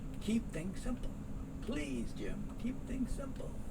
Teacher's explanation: S and S, you're only going to hear one.